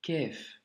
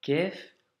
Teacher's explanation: il faut vraiment que ça sorte du fond de la gorge et que c'est un son qui remplisse la bouche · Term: lettre emphatique